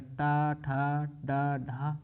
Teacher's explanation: ट वर्ग का उच्चारण स्थान मूर्धन्य ठीक है यानी मूर्धा